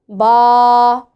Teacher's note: बंद होंठों के गीले हिस्से से अदा होता है